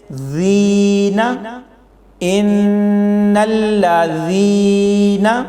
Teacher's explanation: اس لفظ میں دیکھیں ان الذین، ذال یا زیر ذی، یعنی یا ساکن سے پہلے زیر ہے تو اس کو بھی 2 سیکنڈ تک لمبا کر کے پڑھا جائے گا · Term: یا مدہ